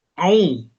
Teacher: ujung lidahnya tempat tumbuh gigi seri bagian bawah, tengah naik, pangkalnya naik. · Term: ain harokat dhammah